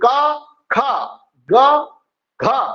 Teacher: ख और घ में ह की ध्वनि आई, हकार की ध्वनि आई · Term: महाप्राण